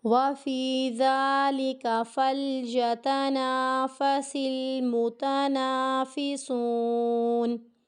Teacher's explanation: اس لفظ پہ ہماری اکثر غلطی آتی ہے، فَلْيَتَانَا، یتانا، ٹھیک ہے، یتانا، تا کو کھینچنے کی غلطی ہمیں نہیں کرنی